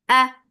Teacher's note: Ma, mad munfasil jais, make it 4 or 5 counts long. A, sharp sound for fatha open jaws, the sound is short.